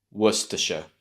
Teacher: make sure you have the stress at the beginning of the word